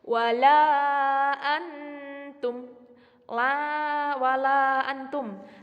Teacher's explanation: nun sukun ketemu tak dibaca samar-samar disebut dengan bacaan ikhfa hakiki · itu 5 ketukan disebut dengan mad jaiz munfasil